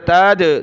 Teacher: دال پر قلقلہ ہوا